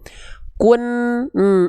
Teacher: Kun ini kan ujung lidahnya masih nempel ke langit-langit berarti masih jelas bunyiannya belum samar